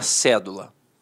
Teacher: a palavra cédula aí a palavra cédula notoriamente é uma proparoxítona a sílaba tônica está na antepenúltima sílaba